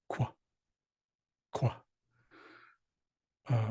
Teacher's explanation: It has a small raised W, which just means that you're going to round your lips before you make the sound. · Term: rounded Q